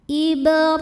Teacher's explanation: dibaca secara tafkhim karena berbaris fathah maka dibacanya tebal ibr di sini juga ada hukum madnya namanya Mad Thobi'i muqaddar